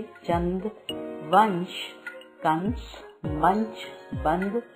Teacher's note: अनुस्वार। इस वर्ण का उच्चारण करते समय वायु नाक से बाहर निकलती है। इन्हें अधिक जोर से बोला जाता है, जैसे चंद, वंश, कंस, मंच, बंद आदि।